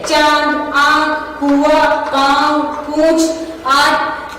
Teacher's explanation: दूसरा है अनुनासिक, इसका उच्चारण नाक और गले दोनों से होता है। अनुनासिक का उच्चारण नाक और गले दोनों से होता है।